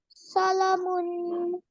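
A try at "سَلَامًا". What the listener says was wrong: Khala zabar. Lam has khala zabar, so read it longer. Salamun waqfan salam. Salamun waqfan salam.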